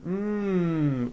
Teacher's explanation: the last sound you hear in the word game is the M sound hmm which is a voiced consonant